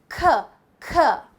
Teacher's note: You will know there is a puff of air. Every time, if you're saying the sound correctly, you will be able to feel the puff of air.